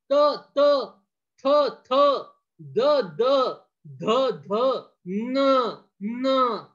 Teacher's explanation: आहे हे काय जॉईन झाले पहा नाही कळलं तर पहा तहा जिभेचं टोक बरोबर वरच्या दाताच्या मागील बाजू चाललं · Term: दंत्य वर्ण